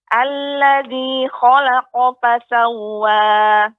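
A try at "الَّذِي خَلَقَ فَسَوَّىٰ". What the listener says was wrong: Akan tapi kok tidak berhenti Ibu, tidak berjeda. Alladzi khalaqa fasawwa.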